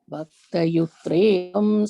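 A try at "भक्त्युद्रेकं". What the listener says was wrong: And in the fourth line, first word, Bhakta, you said Bhaktyut. The ik and it are half. So Bhaktyudrekam.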